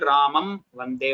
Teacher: Ramam Vande, if you say, there is anuswara, it is still Ramam Vande only. Lips have to touch.